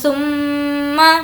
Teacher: ثم، میم پر تشدید ہے غنہ کریں گے۔